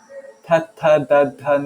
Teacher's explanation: like it touches the top of your teeth